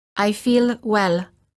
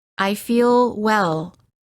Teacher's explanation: the American L is softer and longer than the l sound of many other languages · notice how the L is prolonged by keeping the tongue up longer